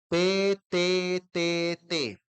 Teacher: la lengua se va hacia adelante y toca la parte de atrás de los dientes superiores